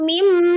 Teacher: Mim tasdid harus gunnah dulu. Mim. Jadi jangan langsung mimma gitu ya, walaupun di hafalan.